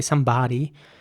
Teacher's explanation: the o actually sounds more like an ah sound